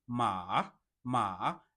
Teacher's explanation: The next one you can see the third tone ma ma. It starts from this level of two and it comes down and it goes up again.